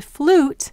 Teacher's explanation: if you contrast that to flute, you don't hear the yes sound, you just hear ooh, flute. This is because if you tried to say flute, it's just your tongue would trip over it.